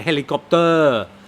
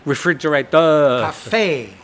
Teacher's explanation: In Thailand, they do tend to, in many of the words, emphasise the final syllable. emphasize the final vowel sound.